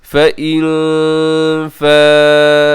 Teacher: فَإِن فَاءُوا، فَإِن میں نون ساکن ہے، نون ساکن کے بعد فا ہے، یہاں اخفا کریں گے، اور اس کے بعد جو مد ہے یہ بھی بڑی مد ہے، حروف مدہ حمزہ ایک لفظ میں مد متصل سے کہا جاتا ہے، 4 سیکنڈ تک اسے آپ لمبا کیجیے گا